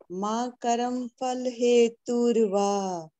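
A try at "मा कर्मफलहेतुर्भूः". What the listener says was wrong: Very nice. Ma karma phalheturbhu. Not bha.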